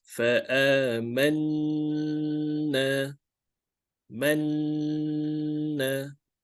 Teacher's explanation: I lengthen the nun sound much longer than the usual. · we need to lengthen, we need to lengthen the nun sound or the mim sound by 2 counts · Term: nasalization